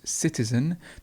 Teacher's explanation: we've got the schwa at the end so it's citizen the stress is at the beginning citizen